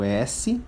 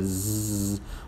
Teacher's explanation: o S, não tem vibração, é desvozeado. E Z, a configuração de boca é igual, mas o Z é vozeado, o Z tem vibração.